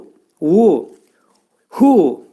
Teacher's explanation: bu hərfin məxrəci boğazın aşağı hissəsindən çıxarılır